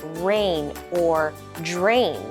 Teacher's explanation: if we focus on the word rain we see an AI kind of like an A Y sound